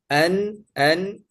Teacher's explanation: ujung lidah makhrajnya aktif dan rongga hidung juga aktif. an an e makhrajnya nun disentuh di ujung lidah dan di khas juga aktif. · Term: izhar halqi